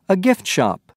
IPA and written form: gɪft ʃap (gift shop)